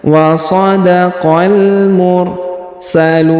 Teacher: Huruf lu dipanjangkan boleh 2 harokat, boleh 4, boleh 6 harokat karena di depan huruf lu terdapat waw sukun sebelum huruf pemberhentian, dan huruf pemberhentian huruf na disukunkan atau dimatikan karena berada di ujung ayat atau di ujung bacaan kita. · huruf qa langsung sambung ke alif lam qamariyah